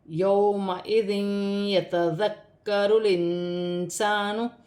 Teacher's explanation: بعد یا آ رہی ہے، یہاں پر ادغام کا قاعدہ ہے، یہاں پر ادغام بھی ہوگا اور غنہ بھی ہوگا